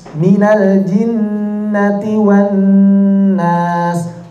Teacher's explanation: Lamnya sudah hilang, yang dibaca adalah nun bertasydid. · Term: idgham bi gunnah